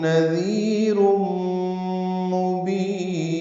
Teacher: تنوین کے بعد میم آنے کی وجہ سے ادغام ہے، یہ ادغام ناقص مع الغنہ ہے.